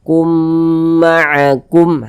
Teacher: Jadi kalau ada mim sukun yang setelahnya huruf mim itu idgham mimi. Nah, maka kita dengungkan ya, kum, sehingga suara itu kita tahan, kita panjangkan sejenak sepanjang 2 harokat